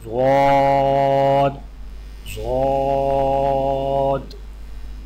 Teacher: ضاد کی ادائیگی میں زبان کے پچھلے حصے کو تالو کی طرف بلند کرتے ہوئے زبان کے موٹے کنارے کو اوپر والی داڑھوں کی جڑ پر آہستہ آہستہ نرمی سے لگا کر خوب موٹی اور دراز آواز میں پڑھیں، یعنی ضاد ضاد۔